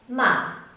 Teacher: And the fourth tone decreases in pitch.